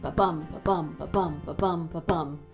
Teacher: As we discussed before, a regular line of iambic pentameter, the meter that Shakespeare wrote in, is going to have 10 beats in it because it's 5 two-beat feet. And the stress pattern will be unstressed, stressed, or short-long, or ba-bum